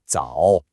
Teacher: Think of the shape of a check mark. You start in your mid-range, you drop your voice down, and then you bring it right back up. A very common mistake is to either say it flat or to only do the falling part and forget the rise. · This is a classic third tone, and I know it can be one of the trickiest for English speakers. Your vocal pitch has to do a little scoop, a dip and rise. Think of the shape of a check mark.